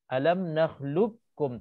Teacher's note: qaf ini kita hilangkan, kita masukkan ke dalam kaf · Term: idgham mutaqaribain